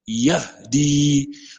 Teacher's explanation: C'est le h. Ouais, le son sort du fond de la gorge